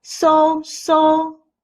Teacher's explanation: The first tone is the highest and flat. So, so. Open your mouth wide and speak loudly, as if you are seeing a dentist.